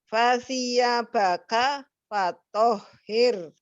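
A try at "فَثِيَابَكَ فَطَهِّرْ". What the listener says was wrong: Tapi kok jadinya huruf lain nggak panjang pendeknya nggak tepat, coba dibaca lagi. Huruf H tebal. H besar.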